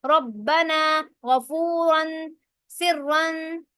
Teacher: پیش یا پیش کی تنوین ہو، مشدد ہو یا پھر غیر مشدد ہو، اس را کو موٹا پڑھیں گے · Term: تفخیم